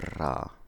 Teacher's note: Think ya. Or a trill, where the tongue is quickly flapped onto a place of pronunciation.